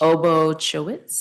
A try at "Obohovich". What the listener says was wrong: Obohovich. The C is silent.